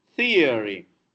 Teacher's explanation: And this particular tha we approximate with taloni tha, which is a plosive for Telugus, but in English it's not plosive. It happens with a gap between two articulators.